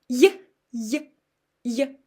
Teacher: But with Y, I can't do the same because it's E краткая, E short. I can't make it long. I can't sing this letter.